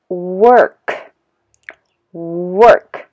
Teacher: But if I say work, work, my mouth, you know, protrudes a little bit, okay? Pronouncing the R sound, R, work, okay?